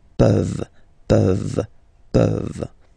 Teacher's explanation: this ENT ending, you write it, you don't pronounce it.